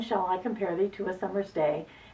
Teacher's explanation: day, a single syllable word at the end of the line, gets a strong stress. We'll mark that with an S.